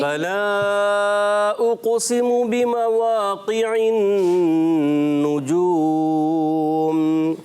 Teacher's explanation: قاف کو پر نہیں پڑا اور آپ کھینچ بھی رہے ہیں